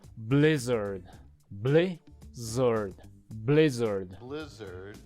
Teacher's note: blizzard is a two syllable word with the stress on the first syllable